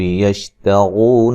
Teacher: یشتغو را کو موٹا ادا کریں گے